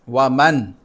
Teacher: اس نون پر اخفا نہیں ہوگا بلکہ اظہار ہوگا کیونکہ اس کے بعد حمزہ ہے، حرف حلقی ہے